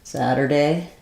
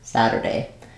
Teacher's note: Okay, we have a question about the word Saturday. So in American English, we'll flap this first T. It sounds just like I was saying the word sadder.